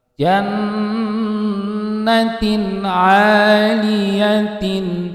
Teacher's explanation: tanwin kasroh atau kasrotain yang bertemu dengan huruf ain, maka bacaannya adalah idhar, tidak boleh dibaca mendengung. Sebabnya adalah ada tanwin bertemu dengan huruf ain, ya.